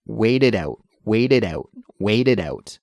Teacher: that final T sound in wait is actually transferred more to a D sound when we say it quickly, right? Wait it out, wait it out.